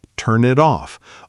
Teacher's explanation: Turn it off often sounds like turn it off, almost like one flowing word rather than three separate ones. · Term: consonant to vowel linking